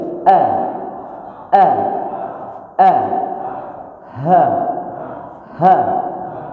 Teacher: A sama H itu keluarnya dari tenggorokan, tapi tenggorokan luar.